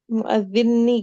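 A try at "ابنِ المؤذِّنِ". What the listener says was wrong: Itu salah salah apa namanya? Salah tasydid. Apa di situ? Yang tasydidnya di atas huruf za, bukan di atas huruf nun. Itu salah apa pengaptikan aja ya.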